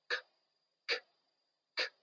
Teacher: There is no vibration. It's just the air coming from your lungs out of your mouth.